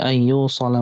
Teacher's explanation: ada idgham bi gunnah, harus ditahan agak cukup lama